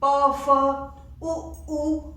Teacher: ओष्ठ को लिखा है, ओष्ठ नहीं ओष्ठ, ओष्ठ मीन दोनों ओठों, ओष्ठ होता है तो एक ओठ, ओष्ठ मीन ऊपर और नीचे दोनों ओठों के द्वारा इसको बोला जाता है